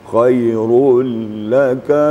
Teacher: muncul sifat lamnya, iaitu wasatiyah, pertengahan. Tidak syiddah suaranya dan tidak pula rakhawa.